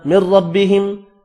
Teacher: ادغام بلا غنہ ہوگا، را پر پڑھیں گے